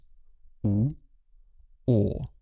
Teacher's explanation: В русском языке гласные «у», «о» сопровождаются округлением губ, поэтому их называют огубленными. Попробуйте произнести звуки «у», «о» и обратите внимание, что губы у вас вытягиваются в трубочку. «У», «о». Оба этих звука задние гласные, язык оттянут назад.